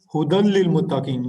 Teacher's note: نون ساکن کے بعد جب لام اور را آ رہے ہوں تو نون جو ہے وہ ختم ہو جاتا ہے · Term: ادغام تام